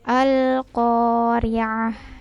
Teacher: Ko-nya panjang 2 harokat, kemudian ini pakai ain.